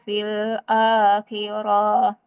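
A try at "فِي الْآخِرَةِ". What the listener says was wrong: Enggak panjang roknya. Fil akhirati min khalaq. Lamnya panjang. Lamnya panjang.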